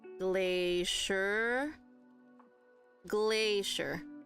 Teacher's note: We have glacier, glacier, glacier. So again, it's just 2 syllables. Glay is the stress.